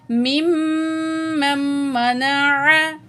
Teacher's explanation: मीम को मीम तशदीद से मिलाएंगे और गुन्ना करेंगे।